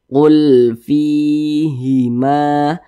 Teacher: fi ini dibaca panjang karena dia memiliki tanda baca kasrah dan berposisi tepat sebelum huruf ya sukun. Mad tabi'i panjangnya 2 harokat.